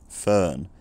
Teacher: I say fern with a very central vowel.